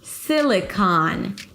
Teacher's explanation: Primary stress on the first syllable sil. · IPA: ˈsɪlɪkɑn